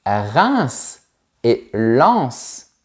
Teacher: Ce sont deux villes aussi, mais on prononce le S final.